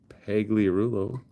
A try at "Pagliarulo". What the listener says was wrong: Pagliarulo, the G is silent, dude.